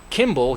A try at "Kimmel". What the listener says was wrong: Kimmel. Kimmel. Kimmel with an M. it's actually double M.